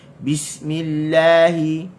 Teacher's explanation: makhraj lam, hujung tepi lidah diletakkan di gusi, baris atas kita kena buka la, dan dia bersifat dengan infitah, hujung lidah kita kena letak di bawah.